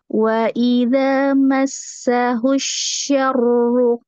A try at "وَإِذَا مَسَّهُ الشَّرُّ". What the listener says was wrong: Ya, cuman syahrunya jangan ada jeda. Syahru ya? Satu nafas cukup.